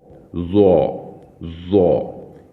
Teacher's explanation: سامنے کے جو دو دانت ہیں ان کے نیچے والا جو کنارہ ہے وہاں پر آپ زبان کی نوک کو لگا کر اسے پڑھیں گے